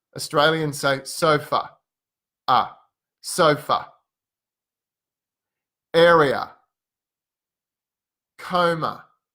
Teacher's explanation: So for words that end in these vowels, in Australia, it usually sounds like ah. It's very open, ah, ah. A bit relaxed, ah. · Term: ah sound